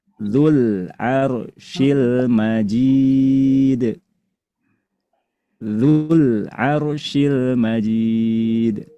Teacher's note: Kalau 2 kata dan sukun satunya adalah huruf mad, cara bacanya huruf madnya dibuang, tidak diucapkan, dihilangkan secara bunyi sehingga hasilnya berubah. Yang asalnya dzu itu panjang berubah jadi pendek.